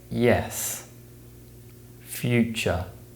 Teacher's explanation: the Y sound is produced by raising the tongue towards the roof of the mouth